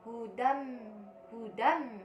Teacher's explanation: Pada kalimat tersebut dibaca idgham bila gunah. Cara bacanya yaitu dibaca lebur tanpa dengung, jadi tidak didengungkan.